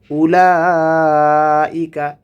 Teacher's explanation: উলাইকা এখানে চার আলিফ টেনে পড়তে হবে, এই যে মোটা চিহ্নটি এসেছে।